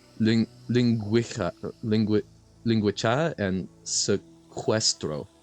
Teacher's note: In words like linguica and sequestro, Portuguese used it for a phenomenon we call a trema, which is when the letter U, rather than a vowel sound, is used for a consonant semi-vowel W sound